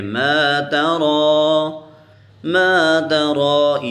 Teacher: ما ترى، تا کو نہیں کھینچیں گے، را کے اوپر کھڑی زبر ہے تو ہم اس کو کھینچیں گے. ما ترى، ما ترى یا کے اوپر کچھ بھی نہیں ہے، نہ حرکت ہے، نہ جزم ہے، نہ شد ہے، کچھ بھی نہیں ہے، تو ہم اس کو ہم ایسے ہی رہنے دیں گے.